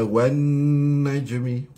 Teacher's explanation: wajibul ghunnah di situ pada nun. Nun syaddah.